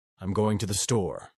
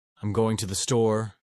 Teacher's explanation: Three, the uptalk at the end of sentences. Californians often raise their tone at the end of sentences, making everything sound like a question.